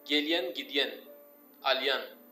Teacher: Benim şivemde hiç o R söylenmiyor. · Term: R düşüyor